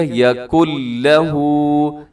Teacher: ادغام تام ہو رہا ہے بغیر غنہ کے